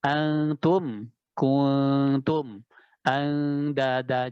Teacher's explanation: Jadi suara samarnya sangat tinggi. Ya a'la darajatil ikhfa. Jadi masuk ke dalam tingkatan ikhfa yang paling tinggi. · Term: ikhfa yang aqrab